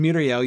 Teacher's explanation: And Miriel, you've got the accent on the first syllable, right, to tell you to stress that one.